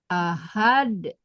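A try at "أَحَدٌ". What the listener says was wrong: Ha tipis, ahad. Nah, masih tebal. Ha. Ahad.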